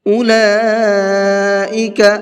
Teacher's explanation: اولئک، یہ لام کے اوپر بڑا مد ہے تو اس بڑے مد کو 4 سے 5 الف کی برابر کھینچ کر کے پڑھیں گے۔